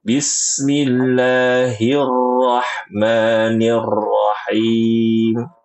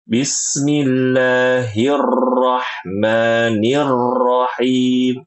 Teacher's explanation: Atau bacaannya takrirnya ditampakkan, cuma jangan berlebihan.